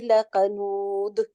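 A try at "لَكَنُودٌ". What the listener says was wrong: लकनूद, नूद ना करे, क्योंकि सख्ती नहीं उसके ऊपर करनी, क्योंकि दाल बहुत नरम, यानी कि आस्ता से छोड़ देना है उसको। नूद, नूद। दाल के ऊपर कलकला तो होगा जब आप रुकेंगे। कलकला लेटर है ना।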